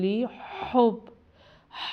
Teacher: ہا حروف حلقی میں سے ہے، یہ حلق سے ادا کیا جاتا ہے